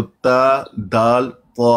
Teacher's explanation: हमारे जो सामने वाले दांत हैं उनकी जड़ों के साथ जब ज़बान की नोक लगती है तो ता, दाल, ता अदा होता है